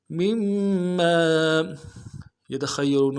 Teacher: میم کو اگلے میم کے ساتھ ملانا ہے، میم کے اوپر تشدید زور دیں گے